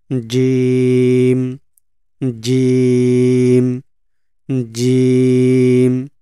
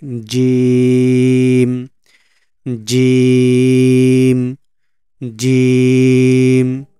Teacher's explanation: আমাদের জিবার মধ্যখান উপরের তালুর সাথে লেগে উচ্চারিত হবে আরেকটু লং করে চার আলিফ টেনে পড়তে হবে জিম জিম জিম